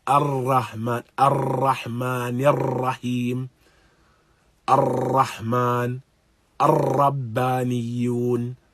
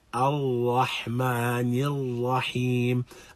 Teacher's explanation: there's going to be something of reverberation, something of a vibration of the tongue upon the letter, but it should occur when the tongue meets the upper palate. That initial meeting is going to be the only time when there should be something of vibration.